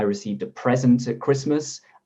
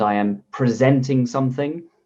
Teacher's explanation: the stress is different present on the first present on the second